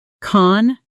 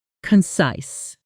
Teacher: The stress is on the second syllable, and that size part rhymes with nice.